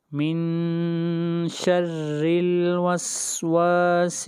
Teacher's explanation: را کے نیچے کسرہ ہے اس لیے را کو یہاں پر باریک پڑھیں گے